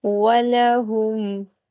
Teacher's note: ہا اس حلق کے حصے سے ادا ہوگا جو سینے کی جانب ہے